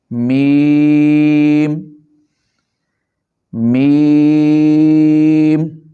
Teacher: میم کو پڑھتے وقت دونوں ہونٹوں کے خشک حصہ کو آپس میں ملائیں گے۔